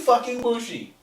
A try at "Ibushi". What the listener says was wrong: It's an I.